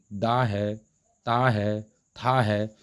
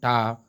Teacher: तो टा जो है वो मूर्धा से बोलने वाला है